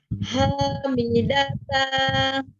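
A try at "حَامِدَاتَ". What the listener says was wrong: Pendek. Hamidata.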